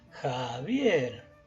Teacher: sílaba tónica dijimos que estaba en la segunda en la segunda sílaba